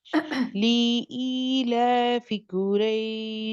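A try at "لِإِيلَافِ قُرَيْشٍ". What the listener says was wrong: آپ کا لی بھی لمبا ہو رہا ہے، لی لمبا نہیں کرنا. قریش. را را پر کریں. را قریش. لإیلاف قریش. ای کی آواز. قریش.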